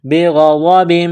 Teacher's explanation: غین گلے سے بلغم نکالنے کی طرح اس کو پڑھیں گے ، غاد کو موٹا کرنا ہے، بغضب، با کے نیچے دو